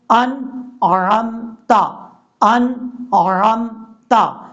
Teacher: یہاں پر جو نون ہے اس نون میں قلقلہ نہیں کرنا. اگر آپ نے پڑھا انعامتا تو یہ غلط طریقہ ہے.